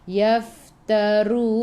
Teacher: Yaf, hamas ada angin. Yaftarun, gigi atas menyentuh perut bibir bawah dan keluar angin dari celah gigi